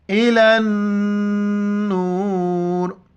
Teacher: نون پر بھی جہاں شد آئے تو وہاں پر ہم جو ہے نا ناک میں آواز چھپائیں گے، غنہ کریں گے. نورے جب وقف کریں گے تو ہے وقف لازم آ رہا ہے.